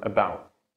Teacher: the T that happens at the end of the word. So the T is like almost silent. It's like almost not there. For example, in the word about. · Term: stop D